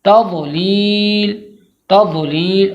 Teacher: کنارہ زبان کو داڑھ سے جب ہم ملائیں گے تو ضاد کی آواز آئے گی، تضلیل تضلیل، اور یہ حرف دال سے آواز میں تھوڑا بہت ملتا جلتا ہے، اس کی آواز دال سے، مگر دال کی طرح بالکل ادا نہیں کرنا ہے اسے۔